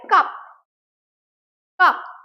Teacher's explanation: If you speak the word cup, you will not find any puff or any air will not come out from your mouth. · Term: Unaspirated